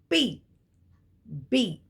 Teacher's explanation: Now when you say P or B, there is a complete contact of the 2 lips. Those 2 lips come together, there is a slight plosion and they separate. So P, B. Now those are plosives or stops.